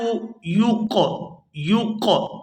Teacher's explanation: ولا یقبل، یقبل، قاف جو ہے یہ حروف قلقلہ میں سے ہے۔ قلقلہ کا معنی ہوتا ہے آواز کے اندر جنبش پیدا ہونا، تو یہاں جب ہم قاف کو ادا کریں گے تو آواز کے اندر جنبش پیدا ہوگی۔ ولا یقبل، یق، یق، یہ جو جنبش پیدا ہو رہی ہے اسی کو قلقلہ کہتے ہیں۔